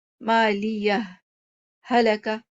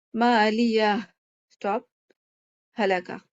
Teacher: اس میں ہم سکتہ بھی دے سکتے ہیں، یہاں پہ آپ سانس نہ توڑیں